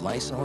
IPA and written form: ˈlaɪsɒl (Lysol)